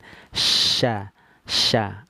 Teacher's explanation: huruf syin keluarnya dari tengah lidah naik ke langit-langit